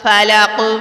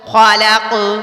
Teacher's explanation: رکنے سے پہلے قاف آ گیا تو میں نے یہاں پر کیا پڑھا، فلق، یعنی ہلکا سا جھٹکا دے دیا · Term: قلقلہ